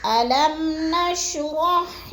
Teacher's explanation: میم کو ہم نے سختی جمعوں کے ساتھ نہیں پڑھنا، آرام آرام ادا کرنا ہے، غنہ نہیں کرنا